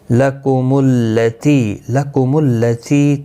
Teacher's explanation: تی یا مدہ ہے، 1 الف کی مقدار کے برابر کھینچ کر پڑھیں گے